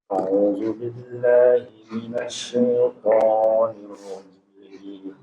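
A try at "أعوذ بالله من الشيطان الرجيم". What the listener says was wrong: nah ingat ya huruf Jim enggak boleh mendesis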